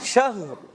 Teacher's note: ہا بھی ساکن رہے اور را بھی ساکن ہو جائے گا